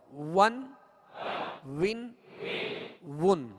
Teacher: دونوں ہونٹوں کی گولائی سے واو ادا ہوتا ہے